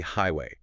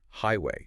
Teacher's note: Stress on the first syllable. The second part is softer.